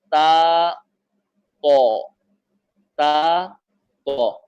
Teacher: تو تا کی آواز جو ہے باریک ہوتی ہے، میں نے عرض کیا تھا، اور تو کی آواز جو ہے اس کے اندر پر کی صفت، موٹا ہونے کی صفت پائی جاتی ہے۔ تو کی آواز قدر جھٹکا بھی ہوتا ہے، اور تا کی آواز میں بالکل جھٹکا نہیں ہوتا ہے